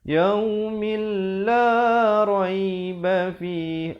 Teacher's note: Mil, di sini idgham bila gunnah. Asalnya yaumin, min. Tapi bila datang lam jadi yaumil